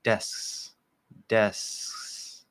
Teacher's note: I'm holding that S. I'm not moving the front of my tongue at all. It's just an S the whole time. And then I just bring that back of the tongue up while I'm holding the S, just part way.